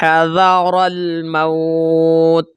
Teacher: تا غیر قلقلہ بھی ہے تو آواز لوٹ کر نہیں آئے گی